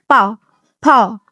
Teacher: दोनों होठ जो होते हैं वो आपस में टच होते हैं, यानी कि जैसे बोले हम पा, फा, है ना, तो ये कैसे हो जाएंगे, ओष्ठ हो जाएंगे।